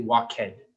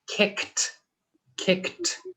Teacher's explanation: if the final letter of kick or walk ends with a k sound and the ed will sound like a t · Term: t sound